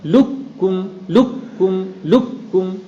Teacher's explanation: آپ چاہے ادغام تام کریں یا چاہے ناقص کریں. تام کریں گے تو قاف کو جو کہ مدغم ہے بالکلیہ کاف سے بدل دیں گے. اس کو بالکل کاف بنا دیں.